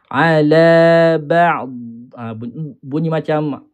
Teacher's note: Bila kita angkat huruf da makhraj dia lidah kita tu, suara dah tak keluar dah. Yang keluar hanya bunyi efek dia.